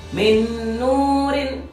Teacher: min nurin di sana nun sukun bertemu dengan nun, maka harus dibaca gunnah. Jadi harus dibaca idgham bi gunnah, memasukkan pada huruf yang kedua.